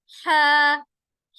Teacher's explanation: حا حروف حلقی میں سے ہے, بیچ کے حلق سے آواز نکالیں گے ہا کی